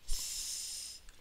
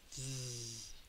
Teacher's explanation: And then TH has two sounds associated with it. One is voiced, one is unvoiced. Both of them, your tongue is between your teeth. So you would teach that as th and th.